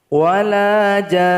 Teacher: Panjangkan dulu 6 harokat atau 6 ketukan, tasdidkan ke nun, tahan 2 harokat, baru kita berhenti.